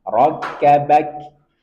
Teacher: Bak, ada sedikit aliran nafas karena dia punya sifat hamas.